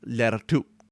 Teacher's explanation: And lertu is colleague, and there's the patientive suffix on the end of that, which is just a T, because at the end of a sentence and end of the word, it turns into a unreleased stop. · you start off saying the T, the t sound, but you stop before you make the little puff of air.